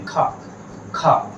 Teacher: तो आप देखेंगे कि वायु जो है तेजी से बाहर निकल रही है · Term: महाप्राण